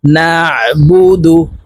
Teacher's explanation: আইন হরফকে হালকের মধ্যখান থেকে চাপ দিয়ে উচ্চারণ করতে হবে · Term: আইনের মাখরাজ